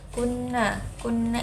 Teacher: ini dengung maka dibaca gunah karena dia Nun yang bertasdid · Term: gunnah